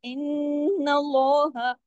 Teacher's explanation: फिर ये देखिए कि नून के ऊपर जबर है, जबर के बाद फौरन अल्लाह का नाम आए, तो जैसा पीछे मैंने बताया कि अल्लाह का नाम आने से पहले अगर जबर हो या पेश हो तो क्या होता है, लाम जलाला, ठीक है, लाम जलाला, यानी लाम को हैवी करके पढ़ते हैं, इन्नल्लाह। · नून की आवाज गुन्ने के बगैर पैदा नहीं होती, एन उसकी आवाज जरूर नाक में जाती है। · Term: बड़ा गुन्ना